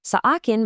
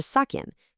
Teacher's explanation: Sa akin merges into sakin.